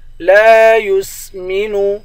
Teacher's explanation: لام کے بعد الف ہے، الف حروف مدہ ہے، اس کو ایک الف کی مقدار کھینچ کر پڑھیں گے